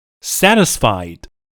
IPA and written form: ˈsætɪsfaɪd (satisfied)